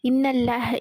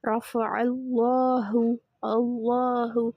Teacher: அல்லாஹ் என்ற வார்த்தையில் உள்ள லாமுக்கு முன்னாடி ஃபத்ஹா அல்லது வம்மா இருந்தால் அல்லாஹ் என்ற வார்த்தையில் உள்ள லாமை தஃகீம் செய்து வல்லினமாக உச்சரிக்க வேண்டும்